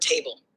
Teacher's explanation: the first syllable T is stressed said with more emphasis and the second syllable ble is unstressed said lightly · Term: stressed plus unstressed, atroshi